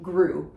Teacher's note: we do not say the T at the end of Groult